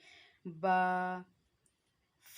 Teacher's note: दोनों होंठों के तर हिस्से से अदा होता है। जब हमारे जो दोनों होंठ हैं इसके तर हिस्से एक दूसरे के साथ, गीले हिस्से एक दूसरे के साथ टच होते हैं तो वहाँ से बा की आवाज़ निकलेगी।